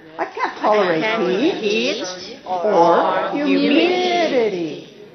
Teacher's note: I use rising intonation on the first possibility and rising falling intonation on the second possibility. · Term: alternatives